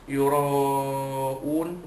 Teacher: Yura'un, ra pertama sekali, ra itu dibaca dari atas tebal, namanya tafkhim